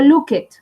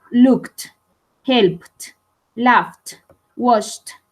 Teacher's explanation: Pero cuando el verbo fonéticamente termina en estas terminaciones, valga la redundancia, como help o look, no digo looked, no. Esta ed se va a pronunciar como si fuera una T. Entonces digo looked, helped, laughed, washed, termina en T.